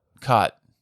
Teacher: You actually have the low back vowel merger.